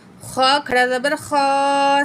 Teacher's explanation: خا کو موٹا پڑھیں گے، خا کے اوپر کھڑا زبر بھی ہے، 1 پوائنٹ کھینچ کے بھی پڑھیں گے